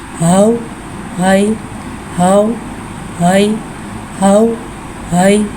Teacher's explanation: या साकिन है, या साकिन से पहले ज़बर आ रहा है, यालीन हो रहा है, लिहाजा यालीन को बगैर खींचे बगैर झटका दिए नरमी से मारूफ पढ़ेंगे